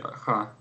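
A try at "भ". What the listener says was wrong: Нет такого слога Ха, есть Бага. Нет такого Ха, ты можешь... Вот, нету Ха, есть Бага. Это отдельный звук, это не Б плюс Х, это отдельный звук. Бага. Не, упаси бог, ты скажешь кому-нибудь вот такое, вот в Ха. Не в Ха, а в Баха.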